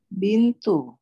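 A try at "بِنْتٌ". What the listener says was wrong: Bintun. Ini jangan tanggung-tanggung untuk mentanwinkan.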